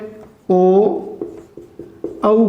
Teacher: जब ध्वनि कंठ से और होठ दोनों हिले, कंठ से भी ध्वनि आए और होठ भी हमारे हिले तो उन्हें कहते हैं कंठोष्ठ्य।